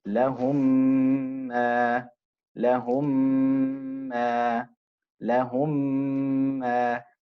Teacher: you're creating the ghunna sound, the humming sound